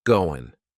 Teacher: That final G in the word going is going to be cut off, and we'll just say, going.